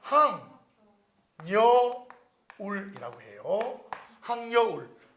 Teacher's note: 비음화도 되면서 니은이 첨가되는 거예요.